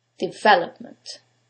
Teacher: In this case, it's the second syllable, development. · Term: word stress